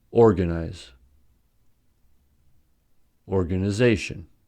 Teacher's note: organization has primary stress on the fourth syllable and secondary stress on the first syllable since organize has stress on the first syllable